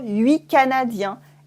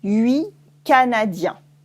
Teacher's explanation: if you have a consonant afterwards, une consonne, we might cut the T.